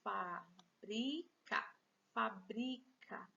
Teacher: Veja que a sílaba mais forte aqui é o bri. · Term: paroxítona